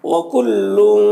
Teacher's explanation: تنوین کے بعد کاف حروف اخفا میں سے تو تنوین میں اخفا ہوگا